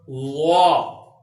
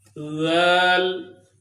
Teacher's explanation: وا کو پر کر کے یعنی موٹا کر کے پڑھنا ہے، ذل کو باریک کر کے پڑھنا ہے